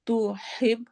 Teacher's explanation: तुहिब ह हरूफ हलकी में से है